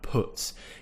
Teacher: the way that most people in the south would pronounce this sound it's more of an uh sound put you'll see that i'm making quite a small shape with